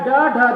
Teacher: यह ड ढ ध्वनियां हैं जो जीभ के अग्रभाग को उलटकर मूर्धा से टकराती हैं, प्रश्वास झटके से मुखद्वार को खोल देती हैं।